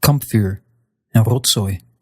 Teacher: the V or a Z is going to devoice and turn into an F sound or an S sound. That gives you words like kampvuur and rotzooi.